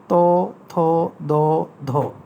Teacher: আবার দন্তধ্বনি, জিভের ডগা গিয়ে দাঁতে লাগে, এখানে 4টি ধ্বনিকে দন্তধ্বনি বলা হয়।